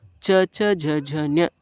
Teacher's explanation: ದವಡೆ ಮತ್ತು ನಾಲಿಗೆಯ ಸಹಾಯದಿಂದ ಹುಟ್ಟುವ ಅಕ್ಷರಗಳನ್ನ ಏನಂತ ಕರೀತೀವಿ ತಾಲವ್ಯ ಅಕ್ಷರಗಳು ಕರೀತೀವಿ · ಈ ವರ್ಗ ಎಲ್ಲಿ ಹುಟ್ಟಕೊತತೆ ಅಂದ್ರೆ ತಾಲವ್ಯ ಅಥವಾ ದವಡೆಯ ಭಾಗ ಮತ್ತು ನಾಲಿಗೆಯ ಸಹಾಯದಿಂದ ಹುಟ್ಟುಕೊಳ್ಳುತ್ತೈತಿ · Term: ತಾಲವ್ಯಾಕ್ಷರಗಳು